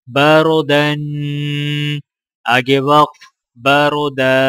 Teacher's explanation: را سے پہلے زبر آ رہا ہے تو لہٰذا را کو موٹا پڑھا جائے گا اور دال کے اوپر دو زبر ہیں اور الف ساکن اس کے آگے ہے تو لہٰذا وقف کرتے وقت دال کو الف کے ساتھ ملائیں گے اور ایک الف کے برابر کھینچیں گے.